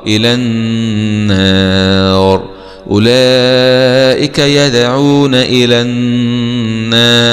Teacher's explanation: نقف عليها مع تفخيم الراء إلى النار أولئك يدعون إلى النار هكذا.